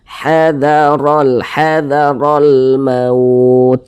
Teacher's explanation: Maka huruf ra-nya dibaca tabkhim, dibaca tebal. Nah, pangkal lisan kita naik terangkat ke atas, ra-nya kita tebalkan.